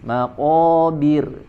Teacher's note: huruf RO di ayat yang kedua di akhir ayatnya dibaca tipis ya karena sebelumnya kasrah jadi jangan maqobir ya jangan ditebal tapi